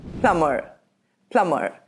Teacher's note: The British English pronunciation of this word is plumber, and the American pronunciation is plumber, plumber. The Americans tend to roll their R's.